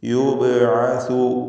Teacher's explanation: ബഇൻ്റെ സുക്കൂൻ ഖൽഖല സുഗ്റ നൽകി ശബ്ദം ഹറക്കത്ത് പോലെ ചലിപ്പിച്ച് യുബ്അസു എന്ന് വ്യക്തമാക്കി ഉച്ചരിക്കുക.